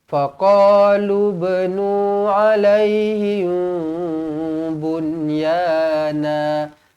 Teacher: Mim kosong bertemu dengan ba. Didengungkan di sini dua harakat ikhfa syafawi. Ikhfa. Jadinya bila ikhfa kena dengungkan dua harakat.